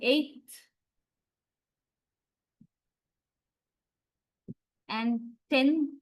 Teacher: All these are alveolars, but they become dentalized because the following sound is a dental consonant.